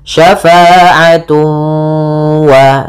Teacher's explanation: ada idgham bi gunnah, cara membacanya ditahan suara wawnya, syafa'atu wa, sambil dimasukkan ke rongga hidung.